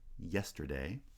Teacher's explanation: So we have the palatal glide. This is the sound y at the beginning of the word yesterday. Now, in IPA, we use the letter J, not the letter Y.